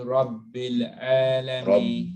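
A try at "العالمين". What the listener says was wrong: Rabbil, same thing. Rabbil Alameen. So Alameen. Squeeze out the ain. From here, it comes out. No hamza. No it's Alameen.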